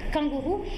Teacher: c'est l'arrière de la langue qui est bloquée